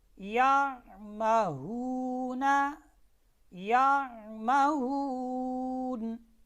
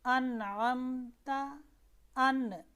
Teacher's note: آئین اور حمزہ میں فرق رکھنا ہے، ٹھیک ہے، آئین وسط حلق سے اور حمزہ انتہائی حلق، یعنی جو سینے کے قریب والا حصہ ہے وہاں سے حمزہ ادا ہوتی ہے، ٹھیک ہے۔ جیسے آپ سورہ فاتحہ میں کہتے ہیں انعمت، ان، دیکھیں ان میں حمزہ ہے، اس کے فوراً بعد آئین ہے، یعنی حمزہ کی جو ادائیگی ہے وہاں سے ادا کرتے وقت فوراً آپ نے وسط حلق کی طرف آواز کو لے کر آنا ہے.